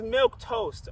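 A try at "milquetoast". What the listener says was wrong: Toast. It's not. There's no toast at the end of that word.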